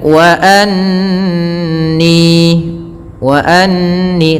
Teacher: tahan suara nunnya karena di sini ada bacaan gunnah, kita tahan dengan 2 harakat. Anni baru dilepas, ni mad tabi'i, fat kasrah ketemu ya.